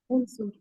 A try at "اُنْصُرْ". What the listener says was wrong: انصر پیش کے ساتھ، انصرو لا